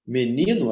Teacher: Menino, a sílaba mais forte é o ni. Tenho aqui o no, que é a última, e o ni, que é a penúltima. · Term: paroxítono